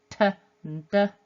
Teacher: F is the unvoiced version, v is the voiced version, and then the alveolar plosives t and d, again another pair. This time the tongue is on the alveolar ridge behind the teeth